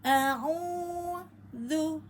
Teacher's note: huruf sebelumnya pada ain berharokat domah, maka pada dibaca 2 harokat atau 2 ketukan